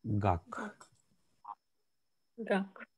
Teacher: Получается, перед гласной звук Г, а после гласной звук К.